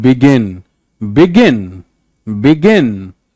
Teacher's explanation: It's not begin, begin, begin. आपका intonation बी पे कम है, गिन पे बढ़ रहा है।